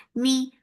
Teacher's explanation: for kasra give E sound, the sound is short.